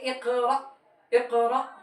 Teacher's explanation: حمزہ ساکنہ کے پڑھنے میں جھٹکا ہونا چاہیے